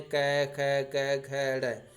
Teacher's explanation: तो इनका उच्चारण स्थान कंठ से होता है। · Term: कंठ्य वर्ण